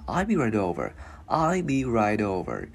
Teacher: Chữ T luyến qua chữ O thành chữ D tiếng Việt nhẹ